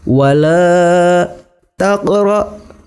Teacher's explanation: hukum bacaannya adalah qalqalah sughra. Cara membacanya huruf qafnya agak sedikit dipantulkan. Wala taqra, hukum bacaannya adalah tafkhim.